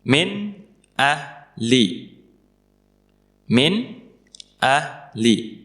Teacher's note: Nun sukunnya kita baca jelas min karena setelahnya adalah hamzah. Dan hamzah salah satu huruf idhar.